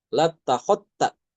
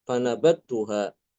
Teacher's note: dalnya hilang masuk ke dalam ta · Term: mengidghamkan dal ke ta